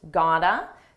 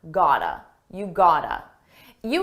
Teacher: It's a combination of the words got to and it's pronounced as one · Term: reduction